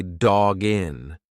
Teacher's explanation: Now the next link is a little bit easier because we have a hard consonant dog and then a vowel. When you've got that hard consonant followed by a vowel, just push the two together like it's one word.